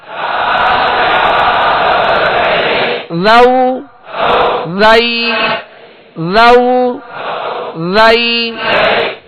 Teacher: ذال کا مخرج ہے سرا زبان، زبان کا یہ سرا اوپر کے جو سامنے والے 2 دانت ہیں اوپر کے، اس کے اندرونی کنارے سے لگے تو ذال ادا ہوگا